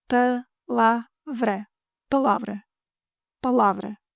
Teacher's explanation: Palavra, closed A, open A, closed A.